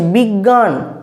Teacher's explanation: আমাদের উচ্চারণে আমরা কি বলছি বিজ্ঞান গ উচ্চারণ নিয়ে চলে আসছি